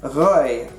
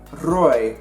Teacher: Oranje Rivier Afrikaans is spoken in the Northern Cape, and it uses a uvular R instead of a trilled R, resulting in words like rooi instead of rooi.